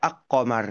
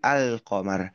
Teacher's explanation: Lam sukun itu dibaca dengan jelas gamblang tidak melebur dengan huruf qof-nya. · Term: izhar qamariah, alif lam qamariyah